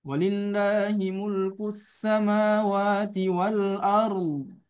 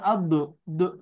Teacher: tidak ada keluar huruf apapun ya ketika huruf dot itu menjadi huruf yang di terakhir atau huruf yang sebelum diwakufkan. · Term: istitolah